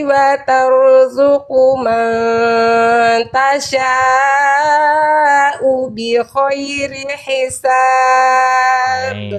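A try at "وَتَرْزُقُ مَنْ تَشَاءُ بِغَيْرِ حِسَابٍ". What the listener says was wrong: Salah makhraj, bukan bi khairi, bi ghairi, enggak ada, jangan ada ngoroknya. Ulang dari wa tarzuqu man tasha'u bighairi hisab.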